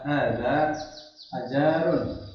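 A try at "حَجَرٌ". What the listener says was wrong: Ini enggak panjang Pak, hajarun gitu. Hajar. Kan enggak ada hajarun, enggak ada alifnya ya. Jadi harus sesuai bacanya Pak.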